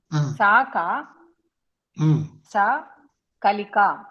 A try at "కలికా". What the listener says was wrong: కలిక కొంచెం పొడుగ్గా అనండి, బాగుంటుంది.